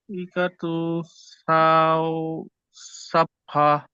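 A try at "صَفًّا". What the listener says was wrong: সাফা নয়, সফা।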